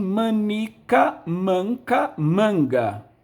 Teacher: De manica para manca, houve a queda do I. Uma queda de um fonema no interior da palavra é uma síncope.